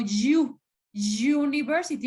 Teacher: esos sonidos se llaman semi semi vocales porque porque ni es consonante ni es vocal